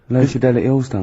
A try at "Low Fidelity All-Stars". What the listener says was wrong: Yeah, Low Fidelity, because you went Low Fidelity, wasn't it? No, it's just you didn't open your mouth wide enough.